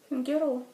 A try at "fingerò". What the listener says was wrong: Не так произносится. G. Fingerò.